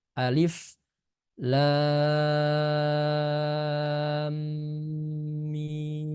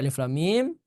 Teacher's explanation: setelah membaca huruf lam enam harakat terdapat dengung yang ditahan pada mim